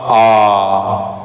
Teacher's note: जैसे ही हम लोगों ने आ बोला वैसे ही क्या होगा पूरा मुह खुल गया